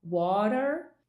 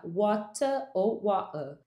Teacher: No inglês americano, a gente faz um R retroflexo no final da palavra, fica water, e no inglês britânico não, fica water ou water. Não existe nenhum puxado, né, que é esse R retroflexo no final.